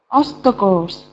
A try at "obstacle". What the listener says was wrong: And there's no S on the end of obstacle here.